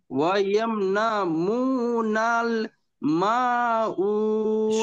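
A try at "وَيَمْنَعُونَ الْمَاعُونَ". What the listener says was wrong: সব ঠিক হয়েছে ভাই, একটুখানি ভুল হয়েছে। ওয়াইয়াম নাউ, আইন ওয়াও পেশ উ। ওয়াইয়াম নাউ, ওয়াইয়াম নাউনাল মাউন।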